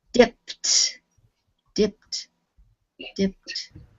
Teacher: First column, yes, because the p sound is up in your mouth, and you can't get down to a D if you're up in your mouth, so you say a T, because that's what happens. When you try to put a D on the end of a voiceless sound, it sounds like T.